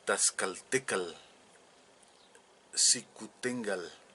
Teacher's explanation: vemos claramente que el sonido de la l era muy clara en el en la pronunciación del navat clásico